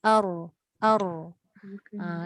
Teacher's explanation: Takrir bermaksud keadaan hujung lidah bergerak-gerak ataupun bergetar. Itu bergetar.